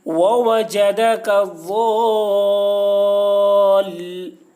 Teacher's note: مد لازم کو 3 یا 4 الف کے برابر کھینچ کر پڑھیں گے